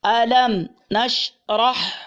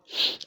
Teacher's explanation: میم ساکن کے بعد نون ہے، اظہار شفوی